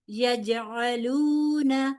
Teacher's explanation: یجعلون جیم ساکن ہے, یہاں پر بھی کلکلا ہوگا, لہذا جھٹکے سے ادائیگی ہوگی.